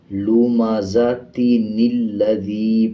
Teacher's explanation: نون کو لام کے ساتھ اگلی آیت میں جو لام ہے اس کے ساتھ ملا کے پڑھا جائے گا۔